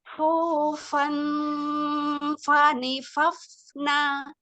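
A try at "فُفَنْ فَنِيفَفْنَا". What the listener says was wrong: Jangan dibentuk ujung lidahnya jangan menyentuh ke gusi atasnya, jangan sampai menyentuh nih. Dia langsung berbelok ke fa ya. Fufan fanifafna. Netral, lidahnya netral.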